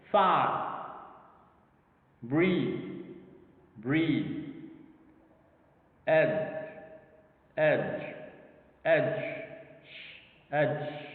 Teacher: Now notice how voiced consonants become partly devoiced at the end of the word.